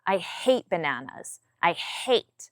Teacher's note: My tone comes down.